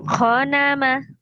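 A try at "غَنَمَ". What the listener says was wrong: Bukan kho tapi go. Go nama. Ghanama.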